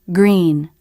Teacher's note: the lips round for the g because they need to round for the next sound r the lip position doesn't change the g sound it's a little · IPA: [g]